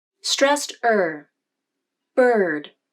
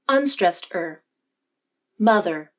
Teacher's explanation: Both vowels have similar jaw opening and tongue placement, but notice the difference in the lip position. The lips flare out more in the stressed vowel, meaning they push away from the teeth more than they do in the unstressed vowel.